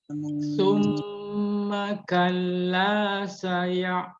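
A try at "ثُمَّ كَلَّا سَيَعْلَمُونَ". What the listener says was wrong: Ainnya alirkan huruf ain. Sumanya monyong ya. Sunya monyong. Tapi ketika mim, maka jangan monyong. Mim jangan monyong. Summa kalla saya'lamun.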